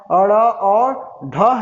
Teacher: तो मैंने उच्छिप्त व्यंजन की भी चर्चा किया था कि ऐसे व्यंजन वर्ड जिनका उच्चारण करते समय जीभ मसूड़ा में स्पर्श हो और तेजी के साथ नीचे गिरे